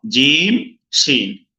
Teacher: জিহ্বার মধ্যকান তার বরাবর উপরে তালুর সঙ্গে লাগিয়ে 2টি হরফ প্রথম পড়লাম, জিম শিন।